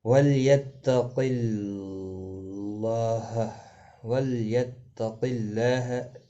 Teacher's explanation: اللہ کا لام زیر کی وجہ سے باریک پڑھا جائے گا · قاف مستعلیہ ہے، پر پڑھا جائے گا